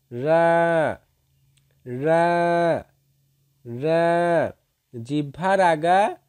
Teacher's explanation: জিহ্বার আগার পিছন অংশ তার উপরস্থ তালুর সঙ্গে লাগিয়ে দিয়ে উচ্চারিত হবে